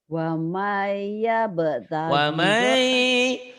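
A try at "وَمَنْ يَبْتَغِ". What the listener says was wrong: Wa may idgham bigunahnya ditahan.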